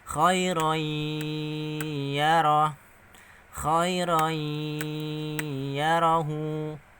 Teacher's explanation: Masuk dengan mendengung, panjangnya 1,5 alif atau 3 harokat atau 3 ketukan.